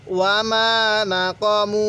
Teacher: ওয়ামা মিমের মধ্যে এক আলিফ টান দিব